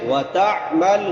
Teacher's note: تا عین کہاں سے ادا ہوتی ہے؟ وسط حلق سے، حلق کے درمیان سے۔ وتعمل، حمزہ نہیں پڑھنا، تعمل نہیں پڑھنا، عین۔